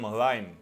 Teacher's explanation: So both wine and vine become vwine. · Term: labiodental approximate